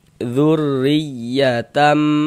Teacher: huruf ro itu kita baca tipis kita baca tarkik. Haah kita tipiskan huruf rnya zurriyatam. · Jadi huruf roh yang memiliki harokat kasroh atau tanda baca kasroh ini ya, maka huruf roh itu kita baca tipis, kita baca tarkik